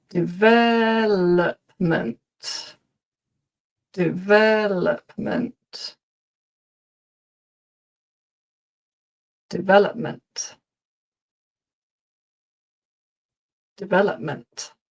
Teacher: the emphasis is on the second syllable, development.